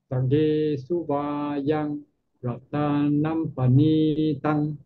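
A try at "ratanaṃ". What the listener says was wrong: The second M you put ratanam. It should be ratanang.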